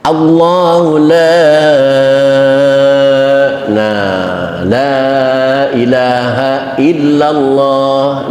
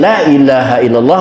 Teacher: la panjang, bahkan panjangnya itu sampai boleh 6 harokat